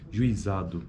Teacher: a primeira palavra apresenta um ditongo que inicia sem proeminência acentual na área vocálica de U e termina com proeminência acentual na área vocálica de I. Juizado. Temos, então, uma sequência de glide e vogal.